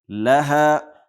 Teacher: اوحى لها ها په ح باندې بدله نسی یا د ها په ځای باندې ح ونه وي، لحا ونه وایو.